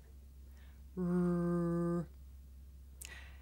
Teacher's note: I make the l sound with the front part of my tongue behind my teeth, and I make the r sound by making my lips come out and pulling my tongue back